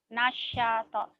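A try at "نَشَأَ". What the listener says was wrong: Shin. Jangan ada tasdid. Nasyato. Nasyato.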